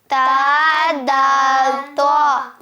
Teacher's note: زبان کی نوک جڑ کے ساتھ، اوپر والے دانتوں کی جڑ جڑ کے ساتھ، جو سامنے والے دو دانت ہیں ان کی اندر والی جڑ کے ساتھ زبان کی نوک لگے گی